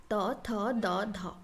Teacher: यह बोलते टाइम आप नोटिस करना कि आपका दांत को आपका टोंग जो है टीथ एंड टोंग का टच होता है